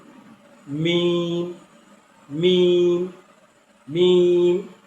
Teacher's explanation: 17 নম্বর মাখরাজ দুই ঠোঁটের শুকনা জায়গা হচ্ছে, এই দুই ঠোঁটের যে অংশটি আমাদের শুকনা থাকে সেই অংশটি একসাথে মিলিয়ে উচ্চারণ হয় অক্ষরটি